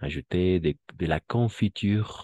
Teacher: la E no se pronuncia al final